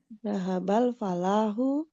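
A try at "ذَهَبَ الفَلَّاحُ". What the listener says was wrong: Tasdidnya jangan lupa. Fallahu. Zahabal falahu.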